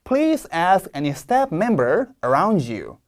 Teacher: 원래 본동사 ask도 세게 읽어야 되는데 바로 앞에 있는 단어가 굉장히 세게 읽히는 단어이니까 please ask 조금 묻힙니다